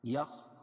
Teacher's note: خا کو موٹا پڑھیں گے، حروف مستعلیہ میں سے ہے